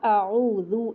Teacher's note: फिर दाल आपका नरम होगा, ज़बान बाहर निकाल के पढ़ा जाएगा आऊज़ु। इसमें ज़ा जैसी सीटी नहीं होगी